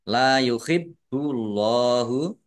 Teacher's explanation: Allahnya dibaca tebal karena harokat di depannya dhammah